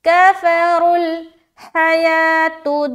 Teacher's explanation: یا کھڑا زبر یا، ایک الف کھینچ رہے ہیں